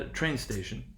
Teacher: train receives primary stress in train station · the first element receives primary stress